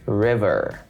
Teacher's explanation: the standard american pronunciation we say all the r's river the r is present at the beginning and at the end